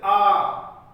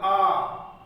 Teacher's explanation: विपरीत स्वर मतलब मुंह सबसे ज्यादा जहां पे खुलता है